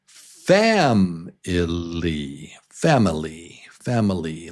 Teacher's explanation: syllable number 1, number 1 is the strong syllable.